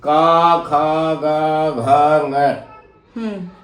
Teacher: तो जब वायु बाहर आती है और किसी मुख के अंग से टकराती है तब ध्वनि बनती है। और ये जो कैवर्ग है ये कंठ से सीधी हवा आती है और बाहर निकल जाती।